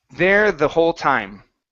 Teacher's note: your tongue is flattening against the top of your mouth instead of going between your teeth